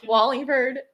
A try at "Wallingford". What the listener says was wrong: Wallingford. Not Ford. It's not Ford.